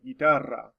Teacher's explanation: of your tongue on the roof of your mouth um but you see two r's side by side that's where we get that wonderful rolling r